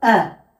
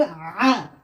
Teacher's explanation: কারণ এর মাখারিজের মধ্যে একটু পার্থক্য রয়েছে। হামজা বার হয় এই কণ্ঠনালীর বা গলার শুরু অংশ থেকে, হামজা। আর আইন বার হয় এই কণ্ঠনালীর মাঝখানের অংশ থেকে একটু চেপে, আইন।